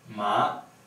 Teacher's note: The second tone is a rising tone, so the pitch goes from low pitch to a high pitch, and it sounds ma, okay, ma.